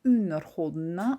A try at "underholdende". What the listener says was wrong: You also say underholdende, not necessary to say the D also. So it's the same thing as with melding, underholdende without the D.